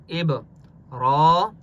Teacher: با قلقلہ میں سے ہے، اس لیے با کے اوپر قلقلہ ہوگا